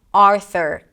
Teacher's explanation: Keep the tongue down, don't lift it up as you pronounce the 'aa' sound - 'ar' - and then lift the tongue up in the back until you hear the R sound. Stick the tongue out for the TH, it's a soft TH, just air. And then pull it back to the R. · And then pull it back to the R. There is no 'u' sound, even though it's spelled with a U, there is no U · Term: schwa